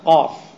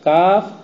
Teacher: قاف کا مخرج تو بالکل شروع زبان سے، جب آپ کاف پڑھیں گے تو اس کا مخرج تھوڑا باہر آئے گا، اب وہ اتنا اندر میں نہیں ہے، وہ باہر آئے۔